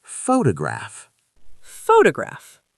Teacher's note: Where's the stress in photograph? On the first syllable